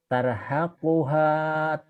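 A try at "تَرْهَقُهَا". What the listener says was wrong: Bacanya mah udah benar, cuma nadanya yang belum beres Pak ya. Nadanya masih nada Jawa, nih Pak, nggak usah pakai lagu dulu, tapi gini. Tar hakuha, jadi nekannya di madban ya Pak. Tar hakuha kotarotun, Pak.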